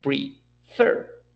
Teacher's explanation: the pronunciation is prefer, and the accent goes to the last syllable.